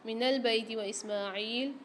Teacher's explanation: من البیت و اسماعیل، میم کے اوپر کھڑا زبر ہے، ایک الف کی مقدار کھینچیں گے، عین کے ساتھ بھی یا ساکن آ رہی ہے، اس کو بھی ایک الف مقدار کھینچ کے پڑھیں